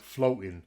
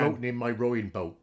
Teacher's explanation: I think sometimes the O vowel can start a bit more rounded as well.